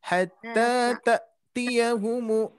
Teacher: Kalau di mushaf itu hamzah sukun yang mana dia sifatnya syiddah. Jadi tidak dialirkan. Hatta tak, nah, ditekan saja.